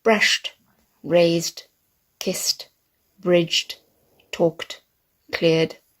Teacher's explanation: the D at the end of the words is much softer so soft it sounds a bit like a tea